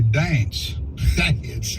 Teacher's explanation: Southerners seem to add a couple of syllables